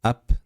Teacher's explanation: Ab demasdan, ap deydigan bo'lsak, ba undoshi pelashib, jarangsizlashib qolar ekan.